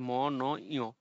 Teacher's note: মূলত নাক দিয়ে উচ্চারণ করার কারণে এখানে নাসিক্য বর্ণ বলা হয় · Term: নাসিক্য ব্যঞ্জন